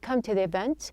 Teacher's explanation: it's not a to with a high or a raised sound it's a t it gives you a little bit of a flapping sound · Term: flapped sound